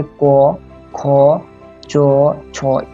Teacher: जैसे को, खो, चो, छो, इस तरह के ध्वनियों के उच्चारण में कंपन उत्पन्न नहीं होता। हालांकि ये पूरी तरह से अगर मैं बोल दूंगा कि कंपन उत्पन्न नहीं होता तो ये गलत होगा। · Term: अघोष